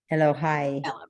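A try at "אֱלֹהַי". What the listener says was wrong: There you go. Nice. Elohai. Perfect.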